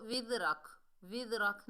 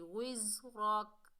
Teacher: زا کو سختی اور سیٹی سے ادا کریں گے